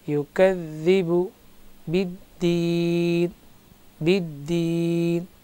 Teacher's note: یا کو ساکن ہے، اس سے پہلے زیر ہے، تھوڑا سا کھینچیں گے. اگر رک رہے ہیں تو زیادہ کھینچنے کا بھی حق ہے کیونکہ مد حرف مد پر جب سکون عارض یعنی ٹھہرتے ہیں آیت پر تو قراء کرام کے پاس اس میں 3 وجوہ جائز ہے: طول، توسط، قصر.